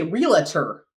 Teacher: we add an extra A in there. A or some sort of vowel sound